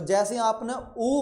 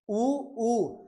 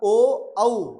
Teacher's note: जैसे ही आपने उ बोला है तो आपके होट क्या हो गए गोल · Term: गोलाकार